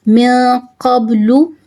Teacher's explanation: Qaf always pronounced with thicker voice, it's mustaliya letter.